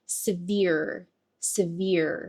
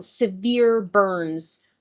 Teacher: Stress on the second syllable here.